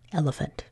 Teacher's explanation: In that second syllable, we would expect it to say E-L-E fant, but we don't say that. We schwa it and we say elephant.